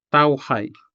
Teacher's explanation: The syllable tau ends in a diphthong ow, formed by the pairing of the vowel A and the semi-vowel W